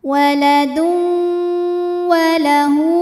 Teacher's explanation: ada tanwin damah menghadapi huruf w maka tanwinnya masuk ke wau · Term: idgham bil gunnah